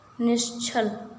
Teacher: यहाँ विसर्ग के बाद क्या है, छ है, और छ का उच्चारण कहाँ से होता है, तालु से होता है, इसलिए विसर्ग किस में बदल जाएगा, तालव्य श में। तो ये क्या हो जाएगा, निश्चल।